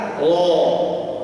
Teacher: Ro itu kedengarannya seperti huruf O, dia bukan O karena punya sifat tafkhim tadi. Pangkal lidah terangkat.